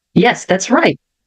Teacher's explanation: E veja que o T aqui eu nem pronuncio.